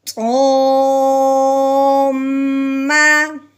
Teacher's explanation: میم کو اوپر شادہ ہے، میم پہ غنہ کریں گے.